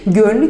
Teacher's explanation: Gönül kelimesinden ü sesinin düştüğünü görebilirim.